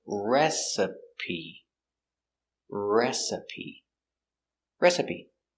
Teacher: put the stress on your first syllable